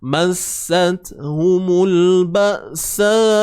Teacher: Hamzah mati, suara tertahan.